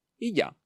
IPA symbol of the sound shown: jo